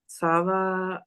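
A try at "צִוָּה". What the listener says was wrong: Only that chirik right there. Tziva.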